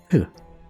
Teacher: the P may have been aspirated which means a burst of breath after the P